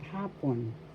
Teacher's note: First syllable ha, second syllable pon. The first syllable has the accent hapon, afternoon.